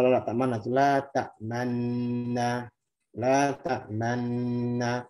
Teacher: Nggak ada isyarat fathah, nggak ada isyarat kasroh. Kalau isyarat dhammah berarti cukup dengan monyong tanpa bersuara. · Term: ismam